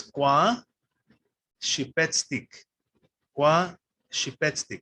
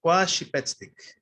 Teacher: the stress is on the second to last vowel